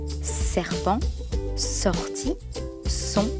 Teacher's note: la pointe de la langue touche les dents du bas l'air passe au milieu de la longue il n'y a pas · les dents du bas l'air passe au milieu de la longue il n'y a pas de vibrations dans les cordes vocales